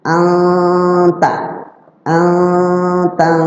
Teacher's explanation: cara ikhfanya itu nun ketemu ta, nunnya diikhfakan disamarkan didengungkan. Siap-siap lidah kita ke ta.